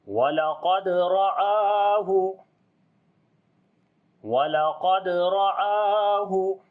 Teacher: را کو بھی موٹا پڑھیں گے، اس کے اوپر زبر ہے، الف کو یعنی کہ حمزہ کو لمبا کریں گے، اس کے اوپر کھڑی زبر ہے۔